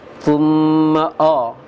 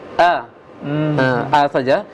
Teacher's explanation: Cuma buka pengucapan A itu sederhana saja, tidak sampai terbuka lebar bibirnya, karena kalau terlalu lebar buka bibirnya bisa terkesan baca ke O dia, ya, thumma O, jangan O tapi A, A saja, tidak perlu juga dinyengirkan bibirnya, biasa saja A.